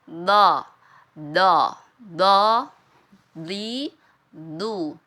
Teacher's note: pertemuan antara Sisi lidah dengan gigi geraham atas do do do di du jadi ya Sisi lidah kita ini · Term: huruf DD